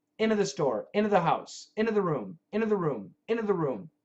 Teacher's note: we're going to cancel the t with the n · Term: cancellation matrix